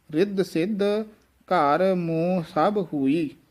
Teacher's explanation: ਮਮ ਦੇ ਨਾਲ ਬਿੰਦੀ ਵੀ ਹੈ ਮੋ ਨਾਸਕੀ ਉਚਾਰਨ ਹੀ ਹੋਵੇਗਾ